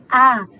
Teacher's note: vogal oral Central não arredondada